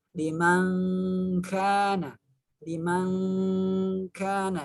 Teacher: bunyi dengung tapi dia tidak dengung maknanya yang benar adalah sama bunyinya disamarkan ke huruf berikutnya yaitu huruf Kaf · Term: ikhfa